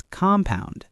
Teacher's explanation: But as a noun, like compound interest, it's compound, stress on the first syllable.